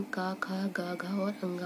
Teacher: पहला का वर्ग को हम कंठे वर्ग बोलते हैं, कंठे व्यंजन बोलते हैं। कंठे व्यंजन का, खा, गा, घा और अंगा होते हैं।